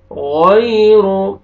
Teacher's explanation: या जज़म से पहले ज़बर है, गैरु, रा को पेश है, रा को मोटा करके पढ़ेंगे